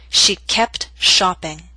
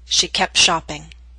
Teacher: careful speech you would hear the T she kept shopping but in Fast and formal speech we drop the T in that consonant group